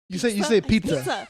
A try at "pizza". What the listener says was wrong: It's not with the K. There's no fucking K in it.